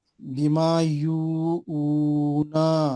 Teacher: پیش کو ہولڈ گول کر کے پڑھنا ہے.